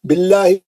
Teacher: لام جلالہ پتلا پڑھیں گے, با پہ زیر ہے